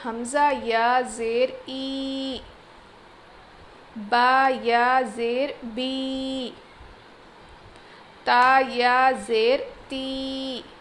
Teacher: یا ساکن سے پہلے زیر حرف مدہ یا پھر یا مدہ، تھوڑا کھینچ کر پڑھیں گے